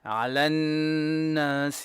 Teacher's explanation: نون شدة, make two beats of غنة